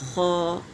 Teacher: خا میں خرخرائی والی آواز نکلے گی